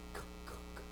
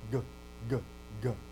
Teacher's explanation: you can hear the vocal cords now coming into play